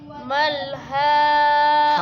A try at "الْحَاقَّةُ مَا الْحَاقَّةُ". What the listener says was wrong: कानी कह आखिर में हा की आवाज़ निकालो अल्हाक़ह मल्हाक़ह